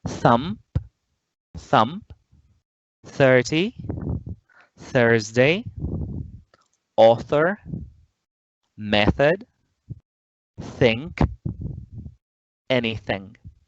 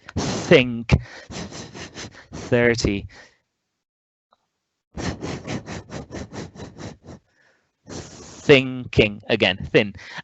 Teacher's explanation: The common sound is that TH sound, that voiceless interdental or dental fricative sound of English.